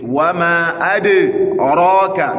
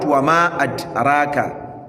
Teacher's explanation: the ra'un is having fatha. You are expected to do tafkhim al-ra.